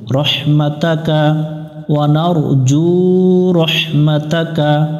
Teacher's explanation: এখানে অনেকজন একটা ভুল করে রহমাতিকা পড়ে উপরে জবর আছে এটাকে জের বানায় দেয়